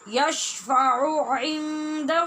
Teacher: آپ نے عین کو یکے بعد دیگرے 2 بار ادا کرنا ہے، یعنی آپ نے 2 بار اپنے مخرج میں جانا ہے.